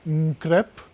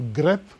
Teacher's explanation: if you add an N in front of it, you get nkrep, and then the N voices the initial, it goes to g